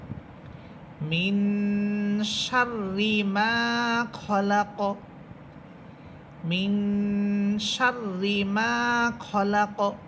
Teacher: কলকলা হরফের উপরে থামার কারণে কলকলা হরফটা সাকিন হবে, এখানে আমরা মধ্যম পর্যায়ের কলকলা করব।